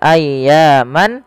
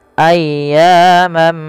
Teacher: masukkan tanwinnya kepada huruf mim dan diganti bunyinya awalnya ayyaman menjadi ayyamamma ayyamam ma'dudah Ya ditahan dan diganti suaranya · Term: Idgham